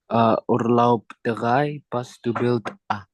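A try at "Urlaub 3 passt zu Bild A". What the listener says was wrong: Iya, richtig ya.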